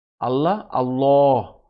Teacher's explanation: বাকি সকল জায়গায় আল্লাহ আল্লাহ, মুখ রাউন্ড হয়ে আল্লাহ হেভি সাউন্ডে বা ফুল মাউথ